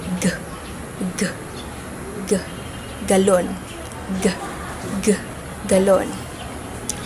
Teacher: At ang paraan ng artikulasyon nito ay pasara na may tunog.